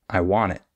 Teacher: instead of stressing the I we would stress the want I want it not I want right if someone points that